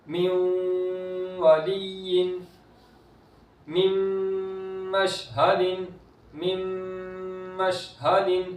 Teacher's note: نون ساکن کے بعد میم حرف یرملون میں سے تو ادغام ہو رہا ہے، گنہ کر کے پڑھیں گے